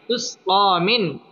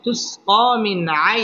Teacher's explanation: নুন সাকিনের বামে আইন আসছে আইন ইজহারের হরফ অতএব এখানে গুন্না ছাড়া স্পষ্ট করে পড়তে হবে